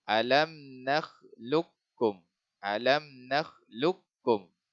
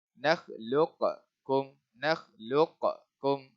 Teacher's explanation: Hilangkan sifat apa ni, qalqalah, bunyi qalqalah qaf ni hilangkan. Kita tak boleh baca nakhluqkum, nakhluqkum. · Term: idgham mutaqaribain